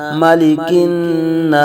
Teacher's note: الف سے پہلے زبر الف مدہ ہو رہا ہے، ایک الف تک کھینچ کے پڑھیں گے